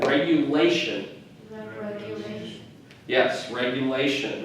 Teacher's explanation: beneficiary okay regulation again another one of those tion words that the emphasis is on the syllable right before the tion